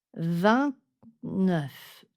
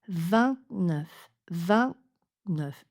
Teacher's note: Le T ici n'est pas complet parce que entre T et N, la langue se met presque au même endroit, donc derrière les dents du haut.